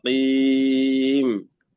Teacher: الأخير القاف القاف مكسورة والتفخيم يكون نسبي